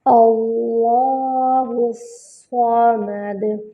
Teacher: اللہ، واو کو لام سے ملائیں گے اور اللہ کا لام جو ہے وہ موٹا پڑھا جائے گا۔ اللہ کے لام سے پہلے جب بھی فتحہ یا ضمہ ہوتا ہے تو اللہ کا لام جو ہے وہ موٹا پڑھا جاتا ہے۔